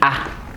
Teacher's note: In some other environments you can also produce it as Note the difference. This A is more at the central position, and lower, very low.